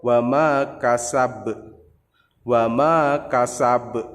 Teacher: Ingat pantulannya lebih besar daripada qalqalah sughra.